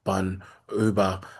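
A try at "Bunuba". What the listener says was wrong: It's Bunaba, not not Bonuba. Buna Bunaba.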